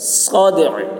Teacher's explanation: دال میں قلقلہ اور عین کو ظاہر کریں گے ٹھہرتے وقت